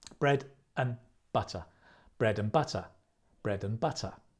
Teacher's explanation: you stress the bread and the butter